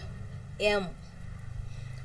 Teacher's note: When we say m, both our lips are closed and air comes out through the nose. M is voiced because hard Sorry, this vocal chords are vibrating and both our lips are closed. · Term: voiced bilabial nasal sound